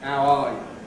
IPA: æə ˈɑː jə